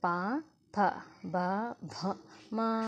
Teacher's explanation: అంటే పెదవుల సహాయంతో వీటిని పలుకుతున్నాం కాబట్టి వీటిని ఓష్ణాలు అంటారు